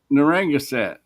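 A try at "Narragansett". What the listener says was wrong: No, nar. It's nar, not narang. There's no n before.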